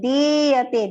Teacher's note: di is long, ya is short, and te is long